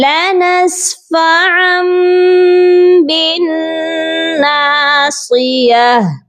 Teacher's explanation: ہم نے یہ دو زبر کو ڈائریکٹ میم کے ساتھ ملا کر پڑھنا ہے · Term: اقلاب